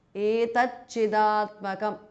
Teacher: Etat T changes to Ch because of Sandhi